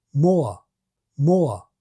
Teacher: If I add a relatively open schwa to the end of the vowel, I don't think it sounds at all rhotic. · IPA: [moə]